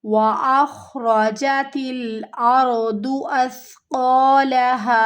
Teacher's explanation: سیٹی کی آواز یہاں پہ نہیں آئے گی، سا نرم حروف ہے، قاف موٹا ہے تو موٹا پڑھنا ہے، اس کو ایک الف کی مقدار کے برابر کھینچتے ہوئے، ہا کو بھی ہمیں ایک الف کی مقدار کے برابر کھینچتے ہوئے یہاں پر ہمیں وقف کرنا ہے۔